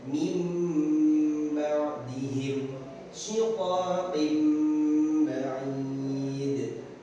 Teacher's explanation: Jadi di bawah ada tulisannya, apabila nun sukun atau tanwin berhadapan dengan huruf ba, maka suara nun sukun atau tanwin ditukar dengan suara mim dan harus dibaca dengung selama 1,5 alif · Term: hukum iqlab